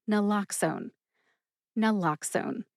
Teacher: Naloxone has ox or lox as that middle syllable that is emphasized. So when you say naloxone quickly, it sounds like lox instead of ox. · So when you say naloxone quickly, it sounds like lox instead of ox. Any way you slice it, if you put the emphasis on that middle syllable, you're doing it right.